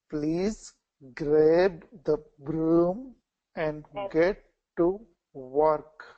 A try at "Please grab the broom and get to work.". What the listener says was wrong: Okay, try that one again. Please grab. Here, you kind of quickly went through broom, so slow down on that one. Broom. Okay, so when you're slowing down and you're kind of controlling that tongue, you get this nice, smooth R sound, which is exactly what we want.